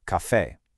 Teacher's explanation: It keeps that powerful accent, the pronunciation stays super intense on that final syllable